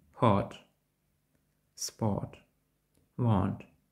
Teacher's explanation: Далі губи слід дещо округлити і вимовити короткий звук «о»